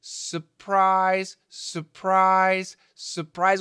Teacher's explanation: many Americans actually say surprise, surprise, surprise with no R. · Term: non-rhotic R